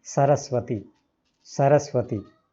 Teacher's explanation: दंत्य जो दांतों से बोला जाए, दांतों से, जहां से त बोलते हैं